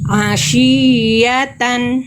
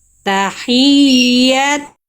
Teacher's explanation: Nabr itu ada penekanan yang lebih kuat lagi pada huruf ya tasydid.